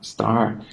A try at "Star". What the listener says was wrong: That's the English pronunciation. It's Star.